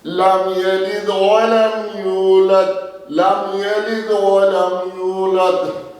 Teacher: میم ساکن کے بعد اگر میم اور با کے علاوہ کوئی حرف ہوگا تو پھر اپنے مخرج سے جم کر ادا ہوگا